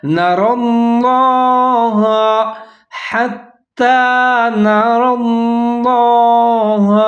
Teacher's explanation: لفظ اللہ، اس کو آپ نے موٹا کر کے پڑھنا ہے کیونکہ اس سے پہلے جو را ہے اس کو بھی موٹا پڑھنا ہے